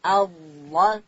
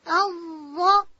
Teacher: ضاد ادا کیږي د ژبې اړخ به د لوړې زامې د غاښو و بیخو ته ورلو او حرف ضاد ډک هم ویل کیږي.